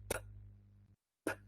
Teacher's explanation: my lips start getting close together. Yeah, they kind of block all air in the cavity of my mouth, and suddenly I open my lips to release the air. So even if you tried, you wouldn't be able to say p for I mean, in continuity. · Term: stop consonants